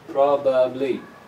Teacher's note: This first syllable is the strong one, so the ba of the second syllable becomes weak.